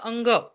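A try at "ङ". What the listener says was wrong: नहीं, अंग is wrong. अंग ये जो बोलते हैं ना, ये वो लोग बोलते हैं जो लोग न को आइसोलेट करके नहीं बोल सकते, इसके लिए वो लोग ऐसा बोलते हैं, लेकिन that is not the correct way to से द साउंड.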